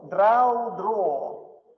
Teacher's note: Долгий звук «о» появляется из дифтонга «ау».